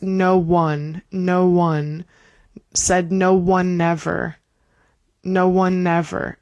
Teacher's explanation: we'll have that N from one bleed straight and link straight into ever